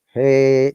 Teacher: it's called upper intonation when you're shouting